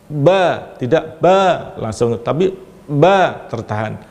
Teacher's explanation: Ada yang bersifat syiddah, yaitu tertahannya suara, yaitu ketika kita tidak melafalkan ada tertahan dulu.